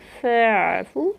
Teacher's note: فَاعْفُو، فا الف مدہ کیا، فَاعْفُو عین وسط الحلق سے ادا کیا میں نے